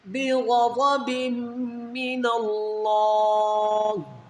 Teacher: دو زیر کی تنوین کے بعد حروف یار ملون میں میم ہے، یہاں پر ادغام الغنہ کریں گے